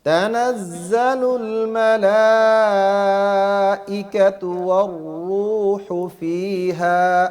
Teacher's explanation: ای حمزہ کی واضح آواز آئے، اس میں نرمی نہیں کرنی، تحقیق کے ساتھ حمزہ کو پڑھنا ہے